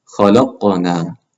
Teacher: The qaf echoes a little bit with that qalqala.